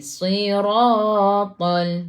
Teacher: Ra baca dengan tebal. Ra baris atas tafkhim ra.